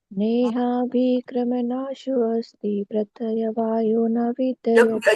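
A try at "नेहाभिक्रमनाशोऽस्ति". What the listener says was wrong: You'll get a speeding ticket. Slow. Nehābhikrama.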